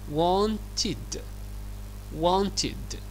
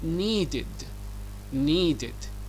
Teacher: بتقول لو عندنا الفعل المنتظم في حالة إضافة ED إليه وينتهي بالصوت ت أور دا، أولي ت أور دا، فهنا الـ ED تنطق ID زي الفعل wanted و needed.